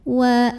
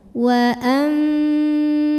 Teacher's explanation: bunyi n-nya diganti jadi bunyi mim sukun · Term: iqlab